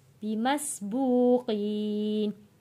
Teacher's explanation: یا ساکن سے پہلے زیر ہے، حروف مدہ ہے، اس لیے ان کو ہم کھینچ کر پڑھ رہے ہیں۔